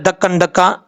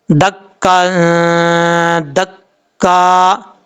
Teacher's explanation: اس کی وجہ یہ ہے کاف کے اوپر دو زبر ہیں، دو زبر کی تنوین کے بعد دال آ رہا ہے حروف اخفا میں سے، تو یہاں پہ نون تنوین کا اخفا ہوگا، ایک الف کی مقدار غنہ کر کے پڑھا جائے گا